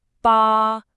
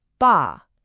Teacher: The word for father isn't the flat, high first tone, ba. It's the sharp falling fourth tone, ba.